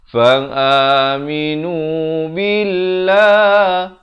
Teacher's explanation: fa'aminu billah dibacakan nipis 2 harakat, lafaz jalalah.